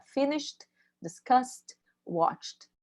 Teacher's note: Então, a única coisa que vocês têm que lembrar, a principal, desculpa, não única, mas a principal, é que não pronuncia o E. E aí, naturalmente, vai formar um som de D ou de T no final